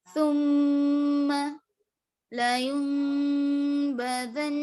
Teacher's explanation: اب غنہ کرنا ہے آپ کو, جیسے ثم لا ينبذن, نون ہے, نون کی آواز آ رہی لیکن ناک میں گھوم رہی, اس کو غنہ کہیں